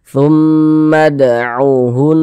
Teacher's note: Gunnah musyaddadah ya. Jadi kita tahan suaranya sebentar, kita dengungkan, kita gunnahkan.